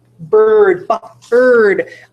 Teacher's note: I do not hear a vowel sound in bird